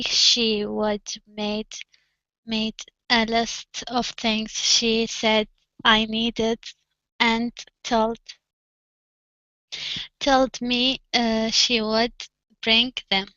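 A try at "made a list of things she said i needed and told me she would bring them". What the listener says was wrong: okay all right very good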